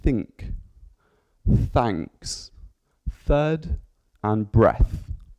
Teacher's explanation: So we've got voiceless, so no vibrations in the vocal cords.